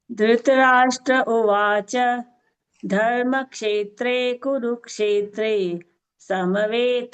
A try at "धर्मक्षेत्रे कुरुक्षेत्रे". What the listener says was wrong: So here, Bhagini, Dharma Kshetre, it's not Dharma Kshetre. There is a ik is there, no? Iksha. Dharma Kshetre Kurukshetre. That is not audible